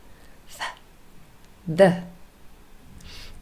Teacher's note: we call these dental sounds, and that is really because you can see the tongue is between our teeth. The. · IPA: /ð/